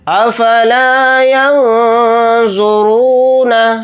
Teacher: یہاں پر اخفا کا قاعدہ ہوگا کیونکہ یہاں پر نون ساکن کے بعد زوا آ رہا ہے، اور زوا حروف اخفا کے حروف میں سے ایک حرف ہے۔